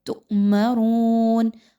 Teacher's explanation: ایسا حمزہ کہ جس پر جزم آ جائے اس کو جھٹکا دے کر پڑھا جاتا ہے